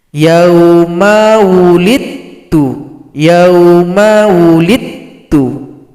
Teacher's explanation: dal sukun jumpa dengan huruf ta tasydid, maka dalnya tidak dibaca karena telah idgham mutajanisain kepada huruf ta, telah melebur